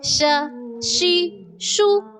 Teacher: دونوں جبڑے بیچ کر زبان کا درمیان جب اوپر کے تالو سے لگے تب ادا ہوتا ہے شین